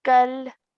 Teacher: So we're not going to take any pause, or we're not going to stretch the sound of the kaf because there's an alif in the middle. We're going to straight away join the kaf to the lam nice and softly, okay, without any delay in our sound.